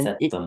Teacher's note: So you emphasize on the M as though it's double M